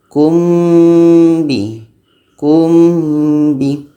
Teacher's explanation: Kebetulan mim dan ba ni adalah sama-sama huruf bibir, jadi kita mudah untuk melafazkannya. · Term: ikhfa syafawi